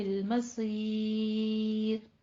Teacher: را جو ہے جب ہم اس پر وقف کریں گے تو پھر را باریک ہو جائے گی، را پر نہیں رہے گی. اور اس کی ہمارے پاس ریزن کیا ہے کہ را جب ساکن ہو گئی ہے اس سے پیچھے یا ساکن آ گئی ہے.